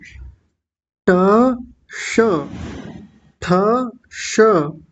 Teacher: जहां से ट बोला जाता है, जहां से ठ बोला जाता है, जहां से ड बोला जाता है, और जहां से ढ बोला जाता है, वहीं से इस मूर्धन्य शकार का भी उच्चारण होता है। तो सबसे पहले ट के साथ मिलाइए इसको।